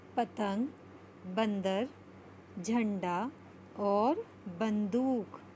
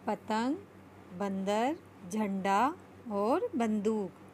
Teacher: अंग का उच्चारण नाक से किया जाता है। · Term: अनुस्वार